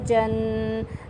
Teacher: زبان کا وسط اور اوپر والا سخت تالو جب آپس میں اٹیچ کریں گے تو جیم کی ادائیگی ہوگی